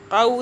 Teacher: क़ाफ को वाव से जोड़ें, क़ाफ वाव ज़बर क़ाउ, देखें वाव साकिन आ रहा है, ये वाला साकिन की निशानी है जज़म की वजह से, तो यहाँ पे लीन हो रहा है क्योंकि ज़बर आ रहा है। क़ाफ वाव साकिन से पहले ज़बर है, लीन हो रहा है।